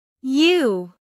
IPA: juː